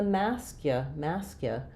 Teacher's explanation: they may say mascu with a little bit of an ooh sound there, but really it's more of a schwa sound